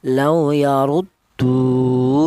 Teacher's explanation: wau mati ini didahului huruf yang berharakat dummah ini dibaca panjang yaitu satu alif atau dua harakat atau dua ketukan.